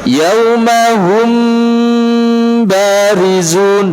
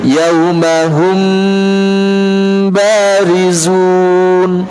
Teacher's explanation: Jadi memperhatikan gunnah tanpa ditasydid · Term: ikhfa syafawi